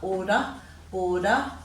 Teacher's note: we've got the er sound at the end we tend to give that a schwa sound